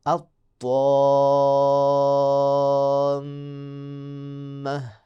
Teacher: طا جو ہے اس کو آپ نے لمبا کرنا ہے اور فوراً طا کے بعد میم مشدد آ گئی ہے، تو لہٰذا یہ مد لازم کلمئی مثقل کی مثال ہے۔